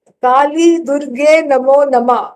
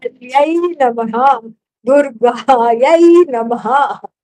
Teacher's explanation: you have to articulate the ha in Namaha because that Visarga is not just there for Alankara. It's not there for some kind of decoration.